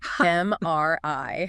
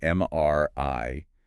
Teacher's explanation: And the stress is on that final letter, right? MRI. The voice sort of goes up slightly at the end.